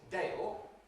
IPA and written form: deɪɫ (Dale)